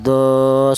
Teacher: huruf tersebut dibaca panjang, yaitu satu alif atau dua harakat atau dua ketukan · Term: matobi